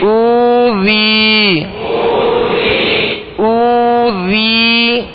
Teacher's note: ذال کو نرمی سے پڑھنا ہے. حمزہ کو ہم نے دراز کیا اس لیے کہ آگے وہ مدہ ہے · واو ساکن سے پہلے پیش ہو تو واو مدہ ہوگا، اور یا ساکن سے پہلے زیر ہو تو یا مدہ ہوگا. اب یہاں یا مدہ بھی ہے واو مدہ بھی ہے، دونوں کو ایک الف کی مقدار برابر کھینچنا ہے